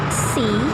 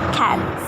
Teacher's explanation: The difference between E and A is a difference of tongue height, and we should describe E as a relative closed vowel and A is a relative open vowels